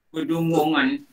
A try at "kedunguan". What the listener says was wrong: Kedunguan. Buang NG tu tak? Buang NG yang second. Dunguan.